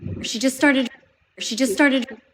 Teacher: The T is dropped. This is really common with the ST cluster at the end. When the next word begins with a consonant, we tend to drop the T.